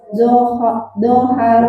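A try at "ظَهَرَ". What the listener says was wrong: Jangan terbawa-tebal. Doha. Doharo.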